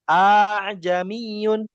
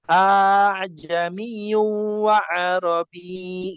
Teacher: A a'jamiyun bahkan cara bacanya aja dua versi. Yang pertama hamzahnya diganti menjadi alif atau tidak dibaca ajamiyun ya. Yang kedua ee dibaca secara ringan. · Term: tashil